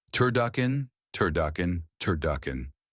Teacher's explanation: Quickly release into duck voiced d short w vowel and a crisp k at the back of your mouth. Finish gently with a schwa based N like the un in button almost disappearing. Link them smoothly.